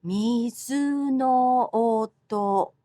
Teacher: in Japanese, each syllable gets an even amount of stress.